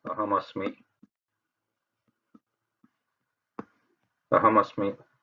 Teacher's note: So here also, when we say aham asmi, that makara is pronounced as ma only. It doesn't change to anusvara.